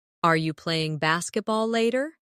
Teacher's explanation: In fast speech, Are you can sound like Are ya.